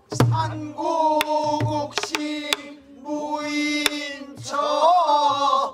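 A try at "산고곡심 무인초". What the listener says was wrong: 거기가 너무 커. 너무 날카롭고 크게 꺾지 말고 거기는 장식음이잖아. 그렇게 그래서 식임 있고 그런 데는 크게 넓고 확 도드라지게 하는 것보다는 작게. 그 부분은 작게 이쁘게.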